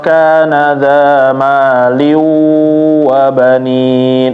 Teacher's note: Nanti ada idgham juga ketika tanwin bertemu waw